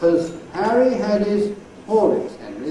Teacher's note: ‘Has’ has to have an /h/, because it’s a strong word.